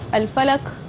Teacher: Qaf tu daripada al-lisan, daripada aqsal lisan.